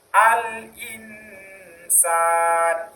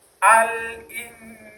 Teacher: Sementara cara membaca yang benar adalah nunnya disamarkan.